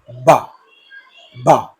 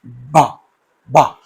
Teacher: So you close, the two lips are coming together, and suddenly you are releasing the air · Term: voiced bilabial plosive